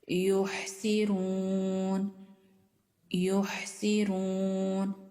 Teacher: हा साकिन है और इसकी आवाज भी गले के दरमियान वाले हिस्से से आ रही है